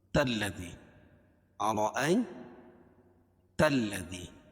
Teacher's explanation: تا کو لام میں ملائیں کیونکہ لام کے اوپر تشدید ہے، اور تشدید والا حرف دو مرتبہ پڑھا جاتا ہے